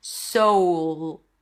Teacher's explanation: you have that back dark deep voice quality, sound quality to it. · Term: dark L